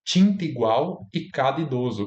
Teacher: Esse A foi apagado na fonética, ele existe na fonologia, mas ele foi apagado